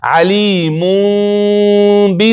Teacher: دلته وایي چې لکه میم چې کله یو ځای کېږي ځکه هلته میم پسې با هم ده که نه، ځکه اقلاب خو د با په صورت کې ترسره شوی ده. دی وایي چې کله د شونډې وچې حصې یو ځای شي ډېر په نرمۍ او لطافت سره غنه وشي